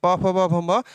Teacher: जितने भी प वर्ग होंगे प फ ब भ म ये आपके ओट से हैं